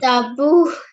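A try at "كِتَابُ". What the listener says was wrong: Right. Again, ta will be the longest. Try the ta with 2 counts.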